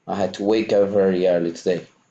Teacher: I had to, I enjoy had and to, which also join, but wake up becomes like one word